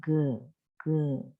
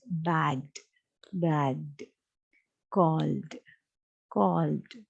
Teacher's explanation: When you pronounce this g, you get a vibration. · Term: voiced